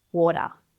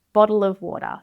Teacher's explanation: some Aussies might pronounce the t sound as more of a really soft duh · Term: flapped T